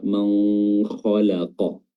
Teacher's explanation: ada yang bacanya samar-samar atau ikhfa